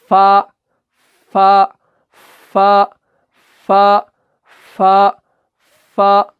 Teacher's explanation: اوپر والے جو دانت ہے وہ نچلے والے ہونٹ کے اندرونی حصے سے لگتا ہے، تو تب جا کے جو ہے فا کی ادائیگی ہو جاتی ہے.